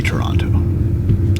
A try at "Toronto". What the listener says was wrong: Toronto. yeah, that's how you say it. just replace it with an N.